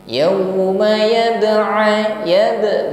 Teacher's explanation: ba sukun pantulkan, ada qalqalah sughra di sana.